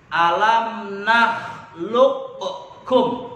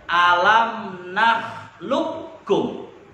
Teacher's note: dimasukkan huruf qaf dengan huruf kaf menjadi huruf kaf yang bertasydid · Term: idgham mutaqaribain